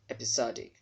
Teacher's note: this syllable that is having letters s o is stressed so that letter O there will sound as aw